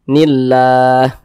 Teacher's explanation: yang kita matikan sehingga namanya berubah dia menjadi Mad aridli sukun panjangnya itu boleh dua harakat boleh empat harakat boleh en harakat yang terpenting konsisten dalam setiap kita membaca al-qur'an